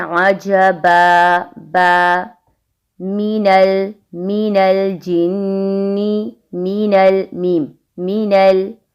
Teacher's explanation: बा और मीम का मखरज हुआ, दोनों लिप्स आपस में मिलेंगे। बा साकिन पर कलकला आता है और मीम साकिन पर कलकला नहीं करना।